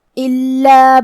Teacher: کلمت الا میں حرف اللام پہ تشدید ہے تو ہمیں 2 حرف کے برابر لام کو پڑھنا ہے